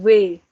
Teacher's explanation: Kalau bahasa Jerman W. Jadi agak digigit gitu.